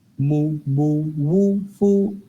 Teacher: Mo, bo, woo, foo are from the lips.